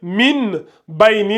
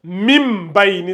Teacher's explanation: Mais la seule chose qu'il ne faut jamais oublier, lorsque vous voyez le mime sur le noun, il faut vous dire que, il y a le mime, donc je fais la règle du qalb, donc je remplace le noun par le mime. Donc au lieu de lire min baini, vous allez lire mim baini.